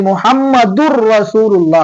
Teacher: இந்த மாதிரி வந்ததுன்னு சொன்னா, இந்த தாலையும் ராவையும் இணைத்திடணும். இந்த தன்வீனையும் இந்த ராவையும் இணைச்சிடணும். இணைத்து முஹம்மதுர் ரசூலுல்லாஹ் அப்படின்னு சொல்லணும். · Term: இணைத்தல்